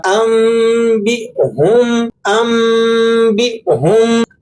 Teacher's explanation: اکثر لوگ اسے انبہم پڑھتے ہیں، انبہم یعنی حمزہ اور با کو ملا دیتے ہیں، جبکہ صحیح یہ ہے کہ آپ نے با کے بعد جو حمزہ ساکن ہے یہاں تھوڑا سا وقفہ کرنا ہے، چھوٹا سا جھٹکا دینا ہے